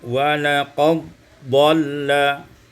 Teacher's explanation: Pada ayat yang ke-71 walaqad dhalla, idghamud dal fit dad, mengidghamkan dal pada dad